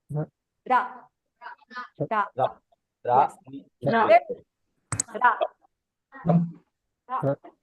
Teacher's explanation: In Japanese, it's a very light flick of the tongue. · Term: ra sound